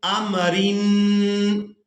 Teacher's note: تنوین کی آواز کو بھی ناک میں چھپائیں گے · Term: اخفا